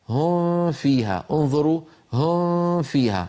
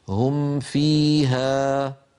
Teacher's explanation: فنظهر الميم عند الفاء ونظهر الميم عند الواو